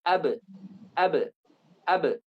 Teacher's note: karena hurufnya ini jahar, tidak mengandung nafas, maka yang keluar adalah pantulan